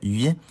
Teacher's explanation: The voiced labiopalatal approximant [ɥ]